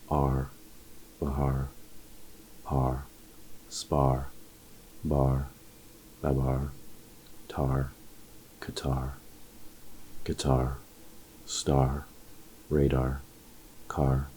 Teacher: without the r coloring the tip of your tongue is relaxed behind your lower front teeth the sound is free and forward